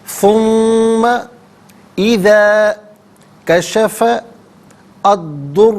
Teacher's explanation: کشفہ میں فا پر زبر ہے، اسے الدرہ کے ضاد کے ساتھ ملائیں گے، درمیان میں سے الف یعنی حمزہ کو حذف کیا جائے گا